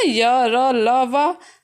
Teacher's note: तो ये सघोष और अल्प प्राण हैं